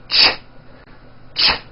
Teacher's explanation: It's a common sound in English. It's a combination of the T sound, t, and the SH sound, sh. When you put these two sounds together, you get a ch, ch. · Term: CH sound